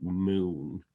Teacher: in new zealand for example the phoneme ooh is becoming more centralized